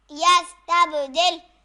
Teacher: با پر ساکن اور جزم ہے اس وجہ سے با پہ قلقلہ ہوگا